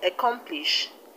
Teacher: And the word accomplish, the stress is on COM, COM, come.